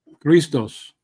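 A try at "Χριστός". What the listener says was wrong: No, because you have the line on top of the O. So it's not Christos, it is Christos. Christos. And your mind is still on the K, while this is a he. he sound. The emphasis is here.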